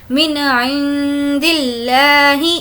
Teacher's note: نون ساکن کے بعد عین ہے تو اب یہاں پر ہم ظاہر کر کے پڑھیں گے من عند اللہ، اس طریقے سے۔